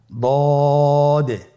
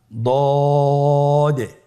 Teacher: আলহামদুলিল্লাহ, দদ হরফটিও মোটা হরফ, মোটা করে উচ্চারণ করতে হবে। দদের মাখরাজ জিহ্বার গোড়ার কিনারা সামনের উপরের 2 দাঁতের গোড়ার সঙ্গে লাগিয়ে উচ্চারিত হয়।